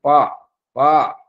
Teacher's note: ఉదాహరణకు పా అక్షరమునకు స్థానము పెదవులు. ప్రయత్నము స్పృష్టం అంటే రెండు పెదవులు తగులుకోవడం, పై పెదవి కింది పెదవిని, కింది పెదవి పై పెదవిని, ఇట్లా స్పర్శించడం వల్ల ఈ పా అనే అక్షరం అభివ్యక్తం అవుతుంది.